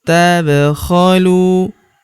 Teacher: Huruf lu kita panjangkan dua harakat